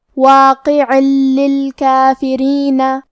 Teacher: تو ہم یہ تنوین کو لام میں ملا کے بغیر غنہ سے لیکن تشدید کے ساتھ یہ حکم کو ادا کریں گے